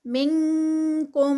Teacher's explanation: نون ساکنہ کا رول اخفا ہوگا اور کیونکہ آگے کاف آ رہا ہے تو اس اخفا میں کاف کی ساؤنڈ آئے گی